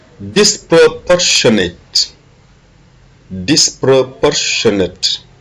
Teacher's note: l'accent est sur le port